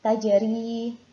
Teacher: Jadi huruf ro-nya berharokat kasroh maka harus dibaca tarkik.